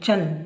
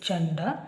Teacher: ಚ ಗೆ ಮತ್ತೆ ಸೊನ್ನೆ ಉಚ್ಚಾರ ಮಾಡುವಾಗ ನ ಉಚ್ಚಾರ